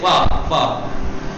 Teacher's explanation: اوپر کے دانت یہاں ہونٹوں سے لگاتے ہیں نیچے والوں سے